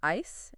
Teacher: Do you hear how the I in ice is longer?